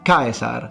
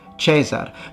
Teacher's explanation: Very similar thing about the I, so the fully pronounced diphthong instead of the simplified e that we find in ecclesiastical Latin